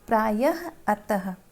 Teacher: विसर्ग, इसका उच्चारण स्वर के ठीक बाद ह के साथ होता है, जैसे प्रायः, अतः।